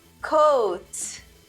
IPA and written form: koʊt (coat)